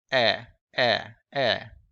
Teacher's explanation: when you produce this sound, your jaws here, it's a little bit lower, eh, eh. And it's not a very relaxed sound. It's a tense sound. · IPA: [ɛ]